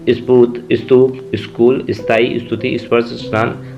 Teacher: क से लेकर म तक कोई भी स से आधा सा लगा हो तो वहाँ पर ई की आवाज़ आएगी। स्फूर्त, स्तूप, स्कूल, स्थायी, स्तुति, स्पर्श, स्नान आदि और भी बहुत सारे शब्द हैं, नाम है बहुत सारे।